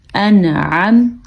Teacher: جب نون ساکن ہو یا نون تنوین ہو اور اس کے بعد عین حروف حلقی میں سے آیا ہو تو اس نون کو ظاہر کر کے پڑھتے ہیں، اس کو اظہار کہتے ہیں.